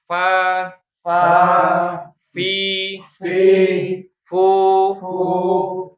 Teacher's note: Fa itu adalah ujung gigi seri atas bertemu dengan perut bibir bawah bawah ya. Bagian yang basah disebut namanya perut bibir gitu ya. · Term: huruf fa